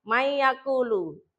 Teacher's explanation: nun mati atau harakat tanwinnya dibaca masuk dengan mendengung. Contohnya diperhatikan ada nun sukun ketemu ya. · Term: idgham bighunah